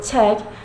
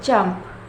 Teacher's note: This manner of articulation produces consonant sounds by blocking the air stream briefly with the tongue in the mouth, but in contrast to stop the blocked airstream is suddenly not released, but is slowly released and causes audible friction. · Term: Affricative